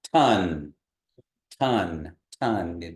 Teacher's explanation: ton ton ton you can feel that puff of air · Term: regular T